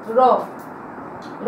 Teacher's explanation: র, র, রকে বলা হচ্ছে কি দেখো র, র উচ্চারণ করার সময় কি বলা হচ্ছে র, র উচ্চারণ করার সময় এটাকে বলা হচ্ছে কম্পন জাত ধ্বনি, কারণ এটা বলার সময় কি হবে, জিহ্বার অগ্রভাগ কম্পিত হয় বলে একে বলা হচ্ছে কম্পিত ধ্বনি। তাহলে রকে বলা হচ্ছে কি কম্পিত ধ্বনি।